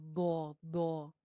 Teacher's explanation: अगर आपकी जुबान की टिप ऊपर वाले दांतों में जाके लगेगी तो क्योंकि ऊपर वाले दो दांतों के पीछे दाल का मखरज है तो ये मोटा सा दो बन जाएगा